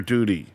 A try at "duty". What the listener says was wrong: You got to enunciate the T. Duty. You said duty. No, it's duty.